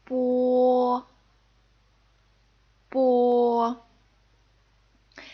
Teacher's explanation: this is unaspirated meaning you do not need to forcefully blow air out as you pronounce this word in fact it's a little bit like the P sound in